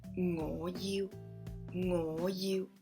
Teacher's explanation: Ngo, rising tone, you, mid-tone.